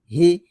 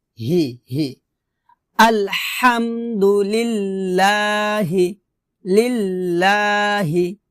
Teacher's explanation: আল হামদু আল হাম হা হাম হাম ঠিক এভাবে আপনাকে উচ্চারণ করতে হবে আলহামদু বলা যাবে না বলতে হবে আলহাম হাম এভাবে চেষ্টা করেন ইনশল্লাহ হয়ে যাবে আবার বলেন আলহামদু হামদু আলহামদু লিল্লাহি লিল্লাহি হি এটা হবে হাজের হি এখানে এই হারটা আমরা হলকের শুরু থেকে পাতলা করে উচ্চারণ করব